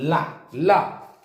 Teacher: जीभ के दोनों तरफ से गर्म हवा निकल रही है। ल जीभ के दोनों तरफ जो हमारे गाल हैं दोनों तरफ गर्म हवा आ रही है। · यानी ऐसा व्यंजन जिसका उच्चारण करते समय जिभ्या के दोनों तरफ से गर्म वायु निकले उसको हम पार्श्विक व्यंजन कहते हैं